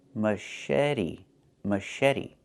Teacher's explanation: The ch makes a soft shh sound like in fish. Mush. And then eddie. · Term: soft sh sound